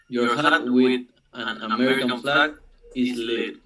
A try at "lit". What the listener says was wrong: No, it's not lead. It's like let. Let. Yeah, como si fuera tu boca hace la I, pero dices la E.